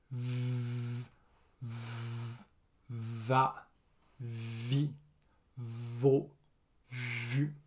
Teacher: Pour le v, la lèvre du bas est sur les dents du haut et le son est long.